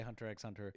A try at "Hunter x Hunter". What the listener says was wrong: You don't say the X."